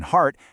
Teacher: the a in heart happens low and way in the back.